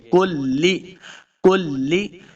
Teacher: اس کاف کو لام کے ساتھ ملا کے پڑھنا ہے، لام کو موٹا نہیں کریں گے